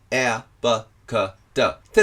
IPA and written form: eə bə kə də (Air Bakada)